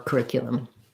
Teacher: You might hear a little bit of an oo here, curriculum or curriculum, but the ick is stressed, so the oo is going to get reduced to more of a schwa sound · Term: second syllable stress